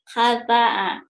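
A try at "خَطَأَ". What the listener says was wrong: Iya kata'a, bukan hata'a, atuh. Cuman K-nya aja sama kok sering ketuker ya, sabar.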